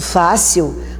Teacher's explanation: Por isso, fácil, a sílaba tônica é a penúltima. Como ela não termina por O, E, A, em, ens, ela tem acento. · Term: paroxítona